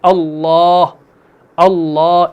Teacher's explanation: لیکن یاد رکھیے گا کہ اللہ کے الف میں اعلیٰ درجے کی تفخیم ہوگی